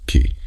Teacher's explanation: The sound was created entirely by your two lips pressing together and releasing a burst of air. The lips are the Makharij for the letter P.